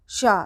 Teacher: सभी का उच्चारण स्थान तालु है। इस शा को तालव्य शा हम इसलिए बोलते हैं क्योंकि इसका उच्चारण जो है तालु से किया जाता है